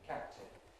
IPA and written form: ˈkæp̚tɪn (captain)